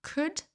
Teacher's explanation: Donc là, ne prononcez pas le L.